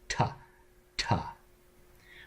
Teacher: you touch the tip of your tongue to the alveolar ridge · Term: T sound